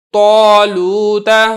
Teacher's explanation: اب یہ دیکھیں تو کو تو موٹا کرنا ہی کرنا ہے، تو کی وجہ سے جو الف ہے یہ بھی پر کر کے یعنی موٹا کر کے پڑھا جا رہا ہے